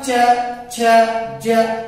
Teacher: पूरी जीभ जाकर के ऊपर जो है तालु से टकरा रही है, यानी उच्चारण कहां से हो रहा है, तालु से। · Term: तालव्य